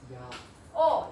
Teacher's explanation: 이로 시작해서 아로 끝나는 거야. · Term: 이중모음